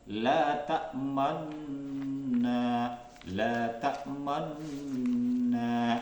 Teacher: memonyongkan, ya, kedua bibir seperti orang mengucapkan dhammah, ya, tanpa mengeluarkan bunyi dhammahnya. Jadi dengan kata lain itu bibir mencucu, ya, di tengah-tengah gunnah. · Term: bacaan ismam